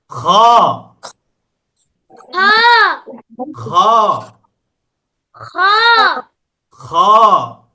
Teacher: খটা উচ্চারণ করতে হবে গলার শেষ থেকে। গলা কণ্ঠনালী শেষ থেকে, কণ্ঠনালী শেষ থেকে খ উচ্চারণ করতে হবে।